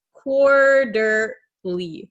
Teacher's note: This T is going to become a flap T.